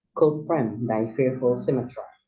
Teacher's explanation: Could here has one syllable and it's on unstressed, but frame is on stressed syllables, and then die is on unstressed syllables, and then fearful 2 syllables.